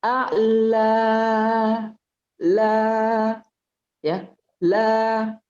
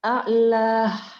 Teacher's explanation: Yang keluar hanya huruf al-jauf saja. Tidak boleh kita tambahin hamzah.